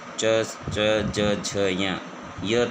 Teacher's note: च वर्ग च, ज, झ, य तथा स का उच्चारण तालु से होता है, इसलिए इन्हें तालव्य वर्ण कहा जाता है।